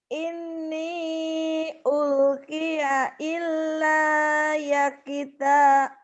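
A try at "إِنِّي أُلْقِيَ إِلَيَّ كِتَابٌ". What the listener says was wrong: Ilayya kita, jangan ilayya kita, ilayya kita. Ya-nya cuma satu. Ilayya kita. Pendek. Ini panjang itu kalau berhenti. Ini ulki. Kalau berhenti jadi panjang karena jadi sukun, ya-nya jadi mati. Tapi kalau nggak berhenti jadi pendek, tetap pendek. Ini ulkiya ilayya.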